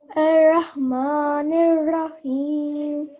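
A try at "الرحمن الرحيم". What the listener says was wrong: So, even thicker, if you could remember to make your mouth round on the ra. So, Ar-Rahman Ar-Rahim. Now, it helps us to make a thick sound on these 2 ra's because we have to sit on them for 2 seconds because of the tashdeed or the shadda.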